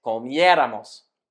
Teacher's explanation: we need to make sure we stress the vowel just before that ramos, whether for an AR or ER-IR verb. So we need to add an accent mark over that vowel to make sure we follow the standard pronunciation rules. · These conjugations all stress the syllable just before the R that starts the ending. And with the nosotros conjugation, we need to make sure we stress the vowel just before that ramos, whether for an AR or ER-IR verb.